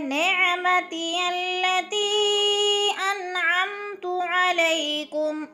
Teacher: نعمتی التی انعمت علیکم، ان پہ اظہار ہو رہا ہے، نون ساکن کے بعد عین حروف ہلکی میں سے ہے تو اظہار بالکل غنہ نہیں کرنا. انعمت علیکم، علیکم، علی پہ یا مدہ، یا ساکن سے پہلے زبر ہو تو یا مدہ.